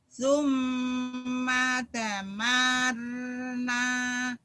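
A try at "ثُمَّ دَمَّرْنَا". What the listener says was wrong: Nyambar ada tasjidnya. Bukan. Summa damarnal. Bukan. Summa dammar. Summa dammar nal. Nal. Nyamber-nyamber semuanya ya. Kayak orang lagi marah. Summa dammar nal. Nyamber-nyamber agak susah. Ketemu tasdid nyamber dan double. Ketemu huruf mati nyamber doang.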